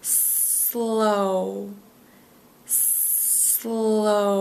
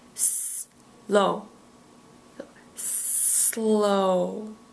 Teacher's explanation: How do you spell slow? And make sure when you're doing the SL that you're connecting the S and the L together.